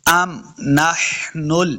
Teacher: میم کے اوپر قلقلہ نہیں کریں گے بلکہ میم کو ساکن کر دیں گے، میم حروف قلقلہ سے نہیں ہے، یہ بات یاد رکھنی ہے.